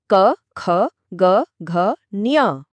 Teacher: इन्हें बोलते समय मुंह के अंदर कहीं ना कहीं हवा रुकती है। एक टच होता है। एक स्पर्श होता है। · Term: स्पर्श व्यंजन